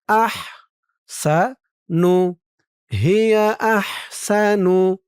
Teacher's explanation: হার আওয়াজটা গলার ভিতর থেকে চিকুন হয়ে বের হবে।